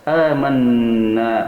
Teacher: gunnah 2 harakat didengungkan pada hidung